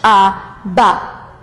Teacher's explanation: When you say ba, there's a release of air, b, and then there's this voice. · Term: voice onset